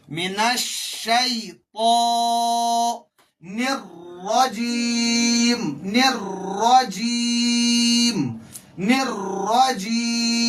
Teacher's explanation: من الشی پہ ہونٹ گول نہیں ہونے چاہیے, من الشی تو کی آواز موٹی آنی چاہیے, من الشیطان الرجیم, یہ را مشدد ہے, موٹی پڑھی جائے گی, اس کی آواز پر نکلنی چاہے اور تھوڑا سا اس میں وائبریشن کی طرح ہونا چاہیے.